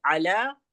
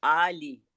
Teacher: अला ऐन से है वहां ऐन की अदायगी होगी हलक के दरमियानी हिस्से से और आली में हमजा है तो उसकी अदायगी होगी।